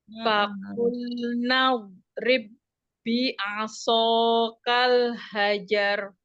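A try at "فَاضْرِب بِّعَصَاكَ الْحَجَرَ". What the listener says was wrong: Untuk pengucapan huruf shad, jangan sampai bibirnya ikut mengonyong gini. Bi'aso, jangan. Tapi bi'aso, so dibuka tapi tidak dimonyongkan. Bi'aso kal hajar, jangan bi'aso gitu, tidak monyong ya. Bi'aso kal hajar.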